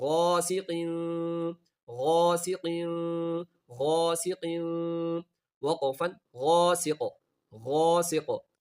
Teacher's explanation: غائن کو موٹا پڑھنا ہے اور قاف کو موٹا پڑھنا ہے اور سین کو قاف سے ملا کر قلقلہ بھی کرنا ہے